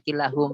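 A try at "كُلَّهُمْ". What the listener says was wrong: Enggak, kalau yang ada inanya kullahum. Kullahum. Ada tasdidnya juga nih.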